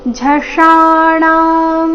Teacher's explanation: ಮೂರ್ಧನ್ಯ ಷ ಆಕಾರದೊಂದಿಗೆ ದೀರ್ಘ ಮುಂದೆ ಣ ಸಹ ದೀರ್ಘ